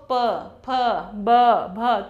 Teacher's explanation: मुख से हवा जो है होठों से टकरा के इन अक्षरों का हम लोग उच्चारण कर रहे हैं। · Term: ओष्ठ्य व्यंजन